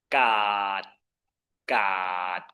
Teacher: You might notice a low tone here because if the ending is not long and open, then it cannot be a mid-tone.